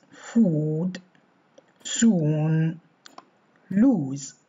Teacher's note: this vowel is almost fully back and has quite strongly rounding